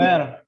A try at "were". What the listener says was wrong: Bukan bacanya bukan we're ya, salah. Bacanya bukan we're, tapi bacanya were. dibaca were pun salah. Kalau kamu baca ini were, itu salah Dibaca were. Were not, bukan where. Kalau where itu artinya di mana ya? Salah. Ya, were, betul were, bukan where Were.